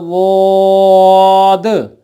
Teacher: सुनने में बिल्कुल सेम लग रहा होगा, बिल्कुल एक जैसा लग रहा होगा, लेकिन असल में ऐसा नहीं है। ज़ुबान की बाईं साइड या ज़ुबान की दाईं साइड जो ऊपर के दाढ़ों को लगती है, जब वो जड़ों को लगे तो पढ़ा जाएगा ज़ाद।